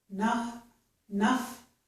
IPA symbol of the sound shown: ʌ